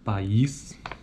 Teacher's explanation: a articulação de duas vogais em sequência como na palavra país cada vogal ocorre em uma sílaba distinta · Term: sequência de vogais